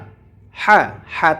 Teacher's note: হা এটিকে আমরা কণ্ঠনালীর মাঝখান থেকে উচ্চারণ করব